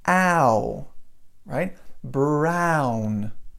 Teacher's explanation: It's the same sound that we have in the word like black. So you have an a sound there, and then you go to an oo. So you go ow, ow, instead of oh or ow or any other sound like that. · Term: ow sound